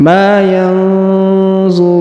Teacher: huruf nun sukun bertemu dha maka didengungkan dan disamarkan